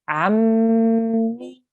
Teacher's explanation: We have a 2 second nasal sound. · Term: mim gunna